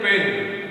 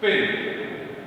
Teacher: So when we pronounce pen, we have taken a single puff of breath. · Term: single syllable